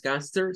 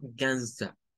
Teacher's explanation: Con el schwa al final, ya no es gangster, sino gangsta